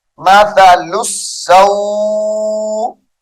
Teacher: وقف کی حالت میں واو کو لمبا کر دیں گے